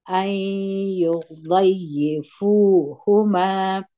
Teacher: دغه نون په د یا کې مدغم سوی دی دلته موږ د یا په اواز وایو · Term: ادغام ناقص